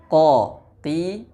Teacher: Cara pengucapan huruf Qaf adalah dengan cara mengangkat lidah kita yang paling belakang atau pangkal lidah dan menempelkannya ke langit-langit mulut kita yang lunak. Langit-langit mulut kita itu ada dua, ada yang lunak, ada yang keras.